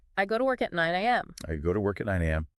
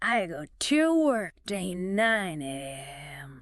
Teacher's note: notice how the words to and at are not stressed and are pronounced in their weak forms